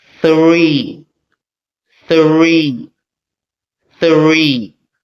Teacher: So notice how my tongue comes in between the two teeth. This is known as the voiceless th. · The R is clearly pronounced after the th consonant.